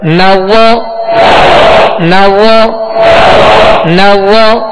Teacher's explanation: اور نرمی کے ساتھ ادا کریں گے. اس میں زا کی آواز نہ ہے، سختی کی یعنی سیٹی کی آواز اس میں پیدا نہ ہو